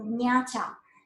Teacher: Wutun has the initial velar nasal, and standard Chinese doesn't have it anymore.